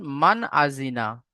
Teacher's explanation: তানবিন বা নুন সাকিনের পরে হুরুফে হালকি ছয়টি অক্ষরের মধ্য হতে যদি কোন একটি অক্ষর আসে তাহলে তানবিন বা নুন সাকিনের আওয়াজকে বিনা গুন্নায় জাহির করে তাড়াতাড়ি পড়তে হবে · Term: ইজহার